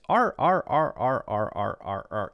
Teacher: Americans really curl the tongue up and back